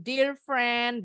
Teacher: Dear-nya pendek. EA bunyi I-nya tapi pendek, nggak panjang.